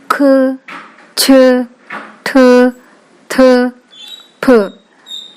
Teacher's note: ಅಂದರೆ ಹೆಚ್ಚು ಉಸಿರಿನಿಂದ ಉಚ್ಚರಿಸುವ ಪ್ರತಿ ವರ್ಗದ 2 ಮತ್ತು 4ನೆಯ ವರ್ಗದ ಅಕ್ಷರಗಳನ್ನು ಮಹಾಪ್ರಾಣ ಅಕ್ಷರಗಳು ಎಂದು ಕರೆಯುತ್ತೇವೆ.